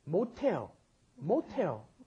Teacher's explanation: that S at the bottom, when pushed up against followed by an H, turns it into the aspirated sound, okay? Right.